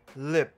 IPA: lip̚